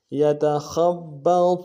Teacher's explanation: خا کو آگے با کے ساتھ ملانا ہے موٹا ادا کرتے ہوئے، با کے اوپر تشدید زور دیں گے